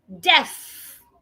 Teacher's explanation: Because that word has th, your tongue has to be outside.